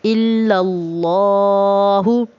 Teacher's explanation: اللہ کے لام کو موٹا پڑھیں گے کیونکہ اس سے پہلے جو الف ہے اس پر زبر ہے